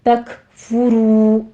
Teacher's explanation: را مفخم پڑھتے ہوئے واو مدہ ادا کرنی ہے، 2 کاؤنٹ کر لیں گے ، فَإِنَّ لِلَّهِ نون مشدد ہے، غنہ واجبہ کریں گے، 2